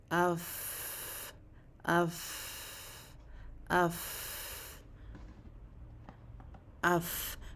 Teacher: جب ہم یہ اوپر کے 2 دانت اپنے نیچے والے ہونٹ کے تری والے حصے پر رکھ لیتے ہیں تو تب یہ ادا ہوتا ہے فا. فا کی ادائیگی میں ہم جلدی نہیں کرتے اور تھوڑا سا آواز کو کھینچتے بھی ہیں، جیسے اف اف اف اف. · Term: فا کا مخرج